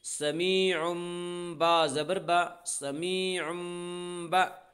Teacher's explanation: تنوین کے بعد با ہے اس لیے تنوین کو میم سے بدل کر غنہ اور اخفاء کے ساتھ پڑھیں گے ، اور اسے اقلاب کہتے ہیں، سمیعم، با زبر با، سمیعم